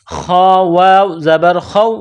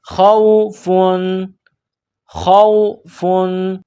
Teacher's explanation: ہدای، فلا لام الف زبر لا، فلا خوف، یہ خا ہے، جس طرح انسان گلے سے بلغم نکالتا ہے اسی طرح اس خا کو نکالیں گے